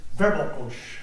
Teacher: So the word is verbokos, and the accent on the first syllable.